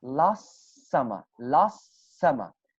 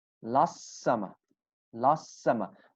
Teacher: So we have T sound and it is between two S sounds. So we do not pronounce the T sound. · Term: one single sound